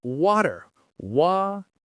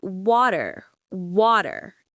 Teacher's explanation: The British accent drops the R sound.